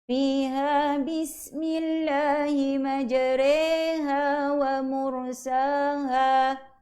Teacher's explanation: Kat situ kena baca 2 harakat. Re itu dibunyikan dengan kadar 2 harakat.